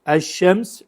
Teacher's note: Lam is assimilated into the next consonant. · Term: sun letters